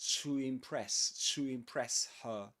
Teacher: the word to plus vowel sound right after it without a pause in the middle